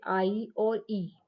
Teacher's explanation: Front वोबेल में है जैसे आई और ई, जो फ्रंट से बोला जाता है, आई और ई जो जीभ के फ्रंट से बोला जाता है।